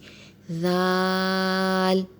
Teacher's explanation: زال کا مخرج یہ ہے کہ زبان کی نوک اوپر والے دانتوں کے کنارے سے لگے تو زال ادا ہوتا ہے۔ یہاں پہ آپ دیکھ رہے ہیں کہ زال کو کھول کے لکھا ہوا ہے، اس پر بھی بڑی مد ہے تو زال کو بھی کھینچ کر پڑھیں گے، زال۔